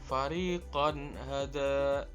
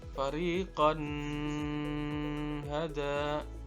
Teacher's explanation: izhar halqi yang enam ini maka nun mati dan tanwin tadi dibaca jelas tanpa disertai dengung